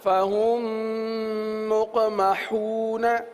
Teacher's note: میم ساکن کے بعد دوسری میم آ جائے تو وہاں پر ادغام شفوی ہوگا